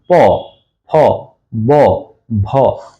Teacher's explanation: এই ধ্বনিগুলা ঠোঁটের স্পর্শে বের হচ্ছে এজন্য এটাকে বলা হয় অষ্ঠ ধ্বনি